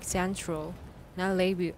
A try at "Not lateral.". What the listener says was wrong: 那个 T 又不见了。 你的那个 stop at stops 要开始注意。